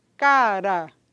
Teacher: a lâmina da língua toca só uma vez lá nos alvéolos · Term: tep